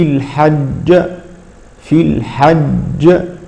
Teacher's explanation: الجيم الاولى ساكنه والثانيه متحركه ولكنها عند الوقف تسكن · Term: تقلقل